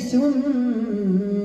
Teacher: ثم م مشدده قلنا مقدارها حركتين